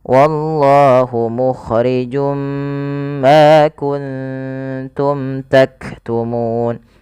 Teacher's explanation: Kemudian pada lafal mim ketemu ta ada bacaan izhar syafawi lagi. Suara mimnya di sini harus dijelaskan.